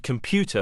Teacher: in the English word computer for example the syllable PO is the most prominent one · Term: stress